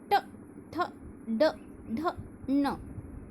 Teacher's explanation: ट वर्ग में हमारी जीभ का जो सामने का हिस्सा है वह तालु से बीच में थोड़ा इधर आके, तालु से नहीं उससे पहले टच होता है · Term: मूर्धन्य व्यंजन